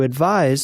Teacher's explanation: the verb advise is written with the letter s which is pronounced like Z · If you hold your hand to your throat, you will find that it vibrates, moving from side to side when you say the z sound. Let us look at sentences with these words, starting with the verb advise.